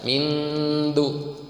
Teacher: Tapi mengucapkan ikhfa itu tidak ming, enggak, beda. Ming, jadi didengungkan, kemudian lidahnya sudah mengucapkan da.